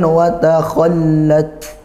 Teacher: ada huruf kha ditebalkan, tak sukun ditekan dan didesiskan ya, nah, huruf ta, huruf kaf sama seperti itu, berurutan, tekan dulu baru didesiskan.